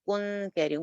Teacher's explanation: یہاں پہ ہم نون کی آواز کو چھپا کے پڑھیں گے. کنتم لیکن باریک رکھیں گے، اس کو موٹا نہیں کر رہی میں. کون، کون نہیں کہہ رہی، کن کہہ رہی ہوں.